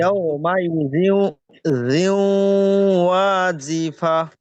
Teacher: জিহ্বার আগা কোথায়? জিহ্বার আগা দাঁতের আগায় লাগে